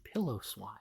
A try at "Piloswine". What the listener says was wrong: Like an actual a person say Pillowswine. There's no W at the end of it. It's Pilo.